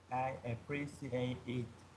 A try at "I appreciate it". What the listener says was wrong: That's correct.